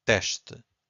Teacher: So again, S before a consonant, it's a sh. 2 syllables here, we have to stress the first one